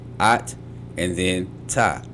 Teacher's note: Since the tav is doubled, it functions both as the final consonant of the first syllable and the first consonant of the second syllable. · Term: double t